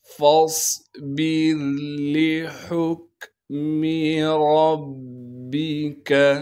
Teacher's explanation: با کو آگے را ساکن سے ملائیں گے اور را کو باریک کر کے پڑھیں گے · یہاں پر فا کے بعد الف مدہ موجود ہے لیکن اس کے بعد ساکن حرف ہے، لہٰذا فا کو ہم صاد سے ملائیں گے، اس لیے کہ صاد ساکن ہے۔ صاد کو موٹا کر کے پڑھیں گے اور صاد میں سیٹی ادا کریں گے